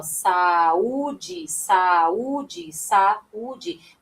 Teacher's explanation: Veja que o U tem autonomia na pronúncia, né? Ele fica em destaque. Então, aqui nós temos um iato, ou seja, temos um encontro vocálico, mas que cada vogal vai ficar em sílabas diferentes, tá bem? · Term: hiato